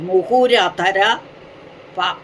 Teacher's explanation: വിസർഗം പോയിട്ട് അധരം ആ വന്നതുകൊണ്ട് രകാരമായി മാറി